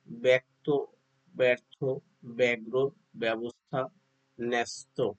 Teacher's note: শব্দের প্রথমে জ ফলা যুক্ত ব্যঞ্জন ধ্বনি থাকলে জ ফলার উচ্চারণ এ এর মতো হবে।